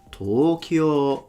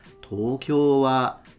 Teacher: So from low to high, it's a heiban pattern.